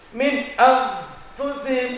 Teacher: Kalau kita tutup hidungnya, inna fatahna, maka tidak akan keluar bunyi dari gunnah itu. Atau ketika ada nun sukun bertemu huruf yang lainnya, seperti nun sukun bertemu fa, min anfusihim, akan tertahan pada hidung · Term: dengungan